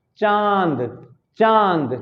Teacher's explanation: नाक और मुंह दोनों से एक साथ हवा निकल रही है, अर्थात ऊपर चंद बिंदु लग जाएगा। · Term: अनुनासिक